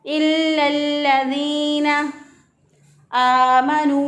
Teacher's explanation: या मद्दा है, एक अलिफ के बराबर लंबा करते हुए पढ़ेंगे